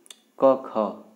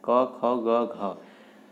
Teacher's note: क, ख कंठ ध्वनियाँ हैं